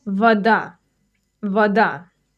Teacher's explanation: The O in vada is actually pronounced like an A. That's because it's unstressed. This is a very common rule in Russian. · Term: Unstressed O